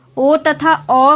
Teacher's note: ओ तथा औ का उच्चारण स्थान है कंठ तथा ओठ, कंठोष्ठ वर्ग।